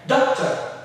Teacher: The doc is what we stress because it's a two-syllable noun. Doctor. He's my doctor.